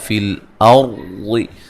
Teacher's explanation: را کو موٹا ادا کریں گے، را ساکن سے پہلے زبر ہے